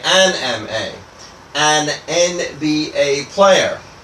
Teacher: M as a letter really has a vowel sound. It has more of an EM sound, which is M.